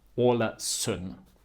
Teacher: the D at the end of the word remains silent